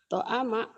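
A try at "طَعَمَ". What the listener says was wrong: Terbalik. Terbalik. Toma'a. Bukan to'ama. Terbalik. Mimnya di tengah. Toma'a.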